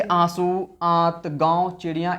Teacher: नाक से बहुत कम सांस निकल रही है, मतलब निकल तो रही है लेकिन उसकी मात्रा कम है, और मुख से अधिक सांस निकल रही है। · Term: अनुनासिक